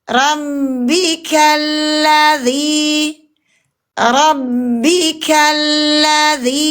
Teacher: dari ka langsung ke huruf lam yang sukun dialirkan dulu. Kenapa? Ada bainiah, ada inhirab. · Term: lam sukun